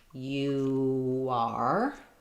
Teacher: vowel to vowel linking, you are, because I'm moving from that rounded U to the unrounded R